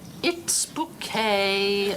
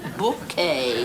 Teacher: The accent on the second syllable.